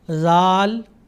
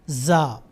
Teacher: زال بہت ہی نرم آواز ہے اس کی، اور زا اس کی آواز سخت ہے. تو ان دو حروف میں بھی ہمیں فرق کرنا چاہیے، زال اور زا.